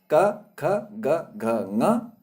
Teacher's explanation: इन वर्णों को उच्चारित करते समय हमें कंठ का सहारा लेना पड़ता, तब ये वर्ण बोले जाते हैं। आप बोल के देखेंगे तो बिना कंठ की मदद के ये वर्ण बोले नहीं जाएंगे। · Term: कवर्ग